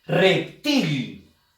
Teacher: la fuerza de voz está en la sílaba til. Entonces, til resulta ser la última sílaba de la palabra reptil. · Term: palabras agudas